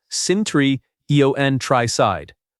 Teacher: The word countryside has stress on the first syllable. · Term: word stress